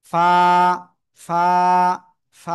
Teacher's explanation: নিচের ঠোটের পেট উপরের দুই দাতের আগার সাথে লাগাবো। লাগিয়ে হালকা বাতাস বের করে। আপনার এক আলিফটা নিয়ে উচ্চারণ করতে হবে।